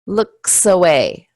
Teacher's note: the S links on to the next sound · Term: linking